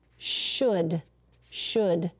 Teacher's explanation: We don't hear the L, do we?